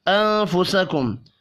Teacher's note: نون ساکن کے بعد فا ہے، اخفاء حقیقی ہوگا